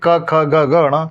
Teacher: जिन व्यंजनों का उच्चारण करने पर जीभ का पिछला भाग कंठ को छूता है उसे हम लोग क्या कहते हैं, कंठी व्यंजन कहते हैं, जैसे क ख ग घ ण।